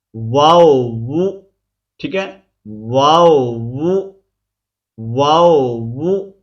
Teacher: ہونٹوں کو گول کرتے ہوئے اوپر کی جانب کھول کر درمیانی سی مد کر کے پھر سے ہونٹوں کو گول کرتے ہوئے باریک آواز میں پڑھیں گے